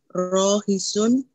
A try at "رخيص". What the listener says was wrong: Rohisun kha-nya yang panjang.